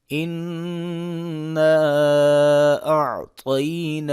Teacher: الف کے اوپر درمیانی مد ہے، چھوٹی مد ہے، تو اس کو مد جائز کہتے ہیں، اور اس کی مقدار 2 سے 3 الف ہے، 2 سے 3 الف کی مقدار اس کو کھینچ کے پڑھیں گے۔